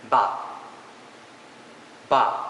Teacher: ba ba meaning meat is of the fourth tone